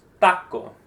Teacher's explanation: ideally, you shouldn't have a puff of air for the T or the C taco because we don't pronounce a T with a puff of air either in Spanish.